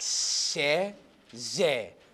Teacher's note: So the sound is made squeezing or narrowing, like se, ze.